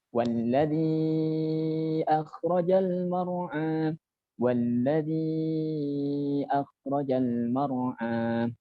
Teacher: Kha di ujung tenggorokan bagian atas ini yang paling dekat dengan langit-langit. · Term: makhraj huruf kha